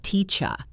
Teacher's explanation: In the word teacher, the ER at the end is a schwa.